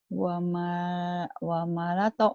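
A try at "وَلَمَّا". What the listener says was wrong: Itu lam dulu. Walamato.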